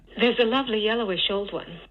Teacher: This is at 200 hertz, all the way down into a little bit of creaky voice at the end.